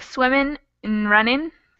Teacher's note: So this and will get condensed down into just the N, swimming, n, running, and we probably will cut off these G's.